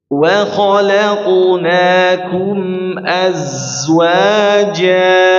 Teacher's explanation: Sifat sofir ya, sofiruha sodun wa zain sin. Maka sifatnya adalah berdesis ya. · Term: desisan dari huruf za